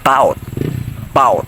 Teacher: the word bout bout which is shortened shortened form of about in this case the vowel a sound at the beginning of the word is excluded meaning its remove making the word easier and faster to pronounce